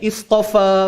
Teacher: fa-nya memang bunyi dua harakat. Dia takkan jadi satu, dia takkan jadi lebih daripada dua. Dia mesti dua. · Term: mat asli